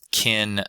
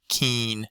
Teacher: There's also a slightly different chain shift going on there, where we're getting some differences between the lax vowels before nasals as opposed to before non-nasals. So in the kin set of words, that vowel getting raised to be more like keen